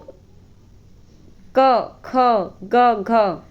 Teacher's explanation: क वर्ग जो है वो कंठ उच्चारण स्थान है